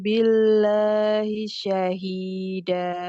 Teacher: lamnya dibaca tipis karena sebelumnya kasrah